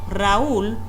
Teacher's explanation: Si mencionamos el nombre propio, Raúl, notamos que en la última sílaba tenemos que hacer una mayor fuerza o intensidad al pronunciarla, porque no llamamos a nadie Raúl, siempre decimos Raúl.